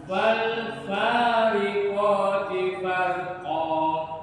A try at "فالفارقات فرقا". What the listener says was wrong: Farnya tebel.